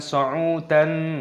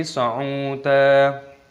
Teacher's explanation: panjangkan dalnya, ada tanda alifnya mad tabi'i, mad iwad, dipanjangkan, bukan sa'udan tapi sa'uda.